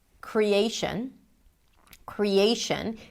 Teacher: The cre is a secondary stress, because you can hear there is a pure vowel there. So it's going to be longish, but not as long as the A, create.